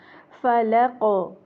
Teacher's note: आखिर में क़ाफ, क्योंकि जब हम साकिन करेंगे तो साकिन की प्रॉपर्टीज़ के हिसाब से ये क़लक़ला हर्फ है, तो इसमें क़लक़ला होगा, और क़लक़ला में भी इस्तिअला यानी कि मुस्तालिया हुर्फ है, तो उसका ख्याल रखा जाएगा।